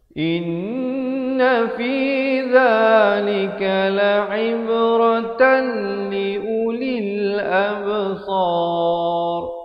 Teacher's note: Dan ra-nya dibaca tebal di sini kerana datang sebelumnya huruf mat, dan sebelum huruf mat itu huruf yang berbaris fathah.